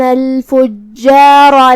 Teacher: کلمت الفجار میں یہاں جیم پہ تشدید ہے تو 2 حرف کے برابر ہمیں جیم کو پڑھنا ہے. آخری میں ہم را کو بھاری آواز میں پڑھیں گے کیونکہ اس پہ زبر ہے تو یہاں را کا حکم ہے تفخیم.